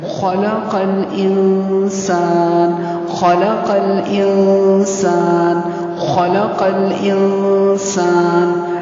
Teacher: سین الف زبر سا سین کی آواز باریک ہوگی اور نون کو ساکن کر دینا ہے